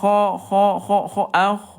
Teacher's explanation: Nah kalau kho dia hams ya kho ada udara. Ini Bunda hati-hati huruf ghain kalau ada udara nanti hurufnya akan tertukar dengan kho.